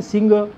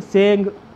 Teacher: पवारांच्या बोलीभाषेत श, शाळा श हा ध्वनी नाही. शकाराचा सकार करण्याची प्रवृत्ती दिसून येते. त्यामुळे शेंगाचे सिंग, शेंगेचे सेंग असं होतं.